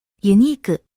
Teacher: ユ ニ ー ク、 Uniku sounds remarkably close to unique in English, but the last vowel u sound is emphasized as ku